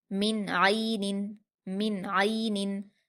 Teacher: نون ساکن کے بعد یہاں پر عین حروف اظہار میں سے ہے، اس لیے نون ساکن کی آواز کو ظاہر کر کے بغیر غنہ کے جلدی پڑھیں گے